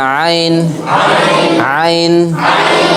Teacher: আইন অক্ষর হলকের মধ্য হতে একটু চেপে পড়তে হয়, একটু চেপে পড়তে হয়।